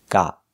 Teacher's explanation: got with a stop T